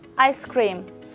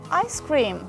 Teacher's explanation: It is pronounced together without any pause, but the first phrase is pronounced with a pause so as to differentiate these two phrases which are similarly pronounced. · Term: juncture